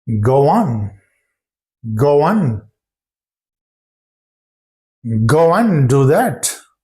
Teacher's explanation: they drop the consonant sound D in the word end